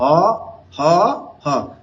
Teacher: বাংলা ভাষায় কণ্ঠ নালীয় ধ্বনি আছে 1 পিস, সেটার নাম হলো হ।